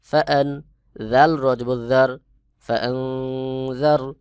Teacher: হামজা নুন জবর আন ফা পেশ ফু সিন পেশ সুফুসু কাফ মিম পেশ কুম আফুসুকুম নুন সাকিন এর পরে ফাইফার হরফ এখানে ইফা গুন্না হবে অর্থাৎ আন এইটা নাকের ভিতর লুকায়ে পড়তে হবে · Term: ইকফা গুন্নাহ